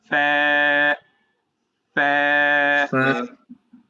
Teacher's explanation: সামনের উপরে দুই দাঁত নিচের ঠোঁটের ভিজা অংশেতে লাগছে